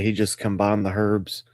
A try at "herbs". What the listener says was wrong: You pronounced it like the Brits.